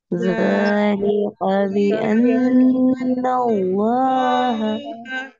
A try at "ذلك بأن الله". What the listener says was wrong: ذलिका में काफ को बारीक अदा कीजिए। ये बारीक काफ है, पुर नहीं पढ़ा जाएगा। ذलिका بأن الله